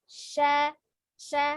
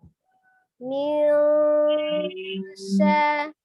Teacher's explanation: tengah lidah bertemu dengan langit-langit tengah ya. Itu huruf shin.